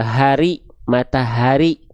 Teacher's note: Makhraj atau tempat keluar dari H besar itu dilafalkan dari yang namanya aqsal halqi. Aqsal halqi itu artinya adalah pangkal tenggorokan ya atau tenggorokan paling dalam atau paling bawah.